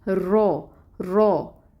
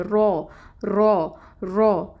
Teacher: جب زبر آ گئی تو اس کو پر کر کے پڑھنا ہے، جب موٹا کر کے پڑھنا ہے، اس کی تفخیم ہوگی